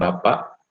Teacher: bapak itulah yang ada bunyi glotal stop di belakangnya